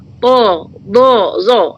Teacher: pangkal lidah itu terangkat ke langit-langit dan dengan keluarnya sebutan itu tebal